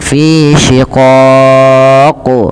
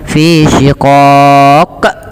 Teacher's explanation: Kita baca pada lafadz qaf ketika kita waqaf, ini kan berarti qafnya menjadi qaf yang sukun. Maka ketika qaf sukun itu terhukumi dengan hukum bacaan namanya qalqalah. Maka ia perlu dipantulkan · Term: qalqalah kubra